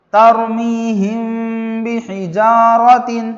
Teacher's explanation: میم ساکن کے بعد با آنے کی وجہ سے یہاں پر غننے کے ساتھ اخفاء ہوگا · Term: اخفاء شفوی